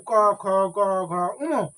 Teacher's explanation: ক বর্গের উচ্চারণ স্থান হচ্ছে কণ্ঠ